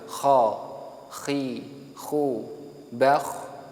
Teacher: yang kha ini punya sifat mahmusah dan rikhwah, otomatis dia suara ataupun nafasnya mengalir.